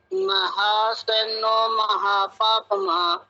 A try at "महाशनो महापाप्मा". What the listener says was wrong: ये महासनो, ये सह आपने बोला ना, ये सरसों वाला सह बोला, लेकिन इसमें शहद वाला सह है। महाशनो महापापमा, बोलिए।